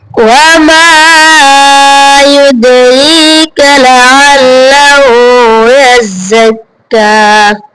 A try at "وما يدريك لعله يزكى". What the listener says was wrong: ঠিক আছে, মানে ওয়ামা মায় অত টান হবে না, কারণ মাদ্দা না, মানে হ্যাঁ হরফে মাদ্দা আছে, উপরে ইয়ে নাই, কিন্তু অত টানা যাবে না।